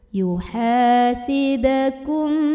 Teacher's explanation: syafawi karena ada mim sukun yang bertemu dengan huruf ba maka mim sukun nya ini dibunyikan dengung ya jadi tahan dulu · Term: ikhfa syafawi